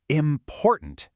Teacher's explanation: It's not important, it's important, with the stress right in the middle. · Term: word stress